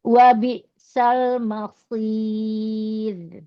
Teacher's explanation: Itu tipis ya ee rnya karena disukunkan.